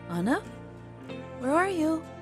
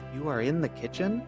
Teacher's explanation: question use a rising tone of voice ana where are you statement with a rising tone becomes a question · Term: rising intonation